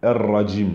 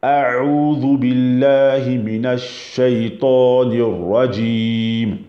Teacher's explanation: Mais parmi la sifette du ra, c'est qu'il y a un tout petit roulement, mais qui est très minutieux